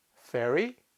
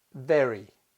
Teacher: The fifth pair are the unvoiced f and the voiced v, as in ferry, very.